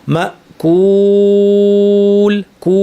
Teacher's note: এই আওয়াজটা যখন করছি ভোকাল কর্ডস কাঁপছে, ভোকাল কর্ডস থেকে আওয়াজটা শুরু। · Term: মাদ্দের ওয়াও